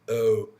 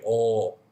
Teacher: Okay, so the main difference really is the mouth position, or the lips position. So for the O sound, it's more tighter ring, O. Or is looser, more relaxed. And the sound really comes from back here, or.